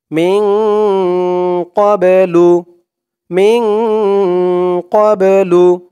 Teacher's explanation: এই বাটাকে একটু ধাক্কা দিয়ে পড়তে হবে, কারণ এই বাটা হচ্ছে কলকলার হরফ।